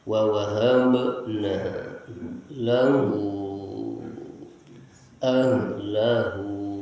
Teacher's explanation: Ha yang keluar dari pangkal tenggorokan.